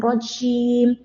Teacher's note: പറഞ്ഞ പോലെ തന്നെ ജീമിന് കട്ടി കൊടുക്കരുത് ജീം ജീം താഴ്ത്തുക മറ്റൊരു കാര്യം ജീം ഉച്ചരിക്കുമ്പോൾ പലപ്പോഴും സഹോദരിമാര് കാറ്റ് വന്നിട്ട് ജ എന്നുള്ള ഹർഫ് ച പോലെയാകും ഉദാഹരണം റജീം തെറ്റാണ് നാവിന്റെ മധ്യം മേലെ അണ്ണാക്കിലോട്ട് വെച്ചിട്ട് കാറ്റില്ലാതെ ജി ജു